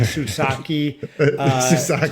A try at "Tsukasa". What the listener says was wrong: the T. You pronounce the T.